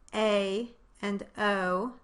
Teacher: the jaw moves to a slightly higher position during their production, but not nearly as much as for the strong diphthongs. That's why we call them the weak diphthongs.